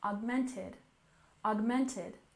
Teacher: augmented reality with stress on the second syllable